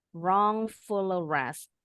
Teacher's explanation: Linking consonant L to the next vowel A.